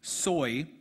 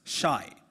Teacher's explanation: S and Sh are perceived as the same sound